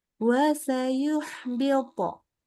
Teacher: Jadi pangkal lidah kalau nggak naik itu nggak bunyi po. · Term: kol-kolahnya